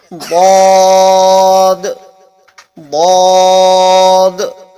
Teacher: مخرج ہے اور اس کی آواز بھی الگ آنی چاہیے، اور یہ حروف مستعلیہ کے اندر کا حرف ہے، اس کی آواز ہمیشہ بھاری نکلتی ہے، موٹی نکلتی ہے۔